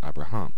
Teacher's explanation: the accent has actually shifted from the second syllable to the third syllable